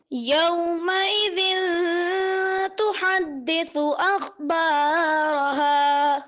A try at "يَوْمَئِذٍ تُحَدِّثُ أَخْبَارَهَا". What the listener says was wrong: جی ماشاء اللہ اچھا پڑھا، مگر اخبارہا تھوڑا سا مد اصلی کو کھینچتے ہیں.